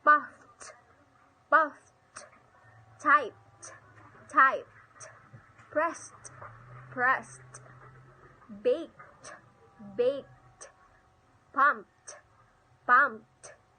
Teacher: The final ED always sounded as T when it is preceded by any of the following voiceless consonant sounds such F, P, K, S, CH, and SH.